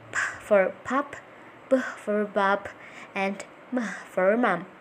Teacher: Here is a list of the sounds you will learn today. Bilabials, formed with two lips.